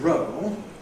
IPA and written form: rəʊɫ (roll)